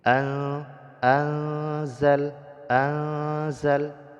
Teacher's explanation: harakat nun sukun bertemuh dengan huruf Zai hukumnya ikhfa ya Jadi didengungkan dua harakat beserta Nun sukunnya disembunyikan ke dalam huruf Zai dan dibaca samar-samar